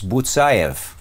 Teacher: Butsayev, accent on the second to last syllable.